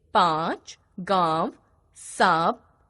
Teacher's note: अनुनासिक का उच्चारण गले और नाक दोनों से होता है